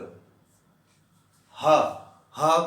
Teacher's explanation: अब अगर ह की बात करें, इस ह की बात करें कि ह का उच्चारण स्थान क्या है, ह का उच्चारण स्थान है कंठ। ह, ह को बोलते समय जो ध्वनि उत्पन्न हो रही है वो कंठ के आसपास हो रही है